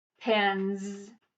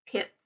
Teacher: It makes a base word plural, and this is how a suffix S sounds. Voiced S, Z sound, or unvoiced S, which is the hissing sound.